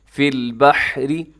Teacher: را کے نیچے زیر ہے، باریک رکھیے گا